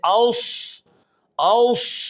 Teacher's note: तो सौद अपने मौक़ा और मकाम से अदा होते हुए तमाम सिफ़ात लाज़िमा को अदा करते हुए सौद की आवाज़ में सीटी पैदा करना ये सफ़ीर कहलाता है।